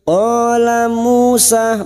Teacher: Fathah diikuti alif, dua harokat kita panjangkan mat tabi'i. Qala Musa, Musa masing-masing dua harokat kita panjangkan